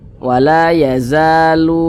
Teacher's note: karena dia izhar dibaca jelas tidak berdengung jadi baca pendek saja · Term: izhar syafawi